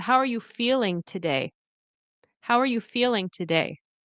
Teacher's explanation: And notice that day. So, day and feel, okay, are stressed.